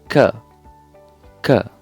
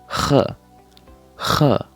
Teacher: It comes from the epiglottis.